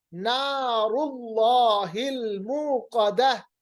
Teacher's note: ملحطمہ نار اللہ الموقدہ، دیکھیں نار اللہ جو لامی جلالہ ہے، اللہ کے اندر جو لام ہے یہ موٹا پر پڑا جائے گا کیونکہ اس سے پہلے پیش ہے